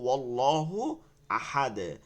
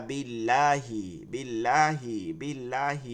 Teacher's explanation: এই যে বা এর নিচে জেরের কারণে চিকন হইছে · ল মোটা হচ্ছে জিহ্বাটা একটু গোল হয়ে যাচ্ছে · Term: বারিক চিকন, পুর বা মোটা